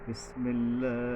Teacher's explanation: বিসমিল্লাহ, এই যে সিন, এখানে সাবধান, বিসমিল্লাহ, এই যে পাতলাভাবে বিস সিনটা নিচের মারির মাঝখানের দাঁত থেকে পাতলাভাবে অনেকটা কিছুটা বাতাস বের হয়ে যাবে, এই রকমের বিস পাতলাভাবে হবে।